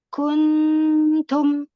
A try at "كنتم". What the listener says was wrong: Kun masih menempel, jangan menempel di gusi coba. Kuntum.